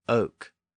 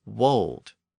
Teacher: this initial W sound was once a common pronunciation at least in some Regional dialects